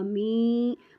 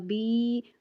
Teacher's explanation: یا ساکن ہو، اس سے پہلے حرف کے نیچے زیر ہو تو یا مدہ ہے، اس کو ایک الف یا کھڑی زبر کے برابر لمبا کر کے پڑھیں گے